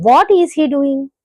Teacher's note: starting అనేది బాగా హై tone లో స్టార్ట్ అవి లో టోన్ లో ఎండ్ అవుతుంది అనమాట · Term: ఫాలింగ్ టోన్